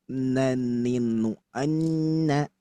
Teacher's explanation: Nun, huruf nun, wan nunu min tarafihi tahtu ja'alu. Nun itu ada di taraf lisan, di bawah huruf lam.